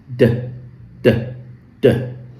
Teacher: the d sound is an alveolar sound. And we said before that alveolar sounds are sounds that come when the tongue goes and touches the back of your teeth ridge here.